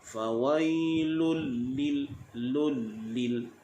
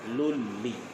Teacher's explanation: masukkan terus lam ke dalam lam yang kedua, lulli, tidak ada dengung. Lil musallin, lam tersebut dinipiskan. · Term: idgham bila gunnah